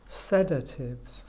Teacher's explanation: the stress actually falls on the first syllable